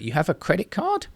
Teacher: native speakers sometimes modulate the end of their voice in a kind of rising tone to ask questions or express surprise